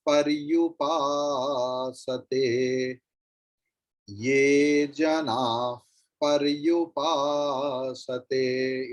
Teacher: Instead of visarga, fakara will be pronounced because pa is there.